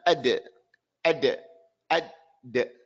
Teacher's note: The dal, no sound, no air.